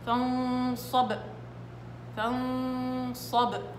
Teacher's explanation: السامع ما لازم ابدا يسمع صوت قرع الحرف، بس اسمع فقط التباعد، التباعد فقط هذا اللي حسمعه اللي هو القلقل. اما اني التصادم ما لازم اسمعه.